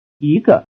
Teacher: the basic high tone on the word for one (yī) changes to a rising tone before the counter ge